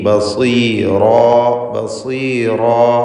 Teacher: ബസീ, സ്വാദിന് കുറഞ്ഞ തഫ്ഖീം കൊടുക്കുക. ഇസ്തിഅലാൻ്റെ അക്ഷരമാണ്.